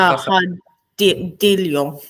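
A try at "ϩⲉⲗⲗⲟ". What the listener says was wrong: That's an L sound, not a D sound. So it's a hello.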